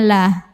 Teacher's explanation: cara membacanya ditipiskan pangkal lidah datar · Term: tarqiq